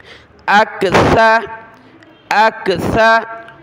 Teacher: वलाकिन्ना अक्सरन्नासी, हमज़ा काफ ज़बर अक, सा पर ज़बान की नोक निकालें दांतों से बाहर, नरमी के साथ पढ़ना है।